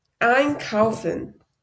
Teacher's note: And that's one way to also know how a syllable is separable or a prefix is separable, because in einkaufen, the ein is stressed, so you know it's separable